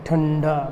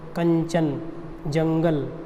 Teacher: अनुस्वार के उच्चारण में जो वायु होती है कहां से निकलती है नाक से निकलती है